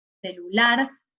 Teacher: la sílaba donde está el acento es lar, o sea, en la vocal A. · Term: sílaba tónica